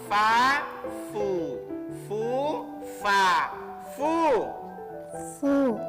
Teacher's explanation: mengucapkan huruf fa itu gigi atas menyentuh bibir bahagian bawah